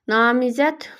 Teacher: Namizəd sondakı D, T-ya keçir.